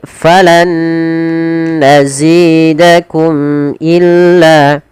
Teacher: Mim mati ketemu hamzah, kita hukumi dengan izhar syafawi, mimnya harus jelas.